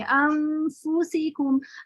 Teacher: तो यहाँ आप इक्फा करने के बाद जैसे ही फा पढ़ेंगे अनफुसी, पहले फा का हम्स निकलेगा, फिर फा पढ़ेंगे अनफुसिकुम। अगर आप ऐसा नहीं करेंगे तो इसकी सिफत वाज़े नहीं होगी और बहुत तेजी से आप इससे गुजर जाएंगे, अनफुसिकुम ऐसे हो जाएगा अगर आप इसका हम्स वाज़े नहीं करेंगे।